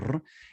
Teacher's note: la rrr, la vibrante múltiple